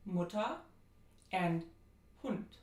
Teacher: A is a short, near high, back rounded, lax vowel. And this is the vowel in Mutter and Hund. It's similar to the in American English, but there are some subtle differences.